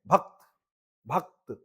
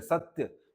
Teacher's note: अर्ध अक्षर के पहले वाले अक्षर पर बालाघात पड़ता है।